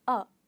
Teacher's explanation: is learn about weak forms so weak forms are like a this is what happens to the word are it takes a weaker form and it becomes a